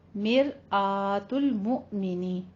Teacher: मिर रॉ मुरक्कक है हमारी, रॉ बारीक पढ़ेंगे। मिर आ हमजा के ऊपर फतह कायमा है, अलग से इसको मुंह खोल के पढ़ना है।